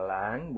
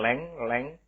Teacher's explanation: Di situ lambang bunyinya adalah a. Maka kita tidak boleh mengucapkan leng, tapi lang.